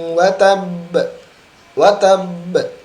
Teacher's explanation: Watabnya ditekan dulu karena di situ ada tasydid.